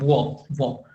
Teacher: दंत ओष्ठ में दांत का भी और ओठ का भी